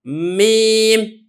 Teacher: जो मीम है ये होंठों के खुश्की वाले हिस्से से अदा होती है